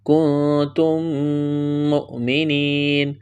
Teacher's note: حمزہ سے پہلے والے حرف کو حمزہ کے ساتھ ملائیں گے، جھٹکا دیں گے